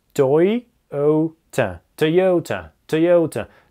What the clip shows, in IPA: tɔɪ'əutə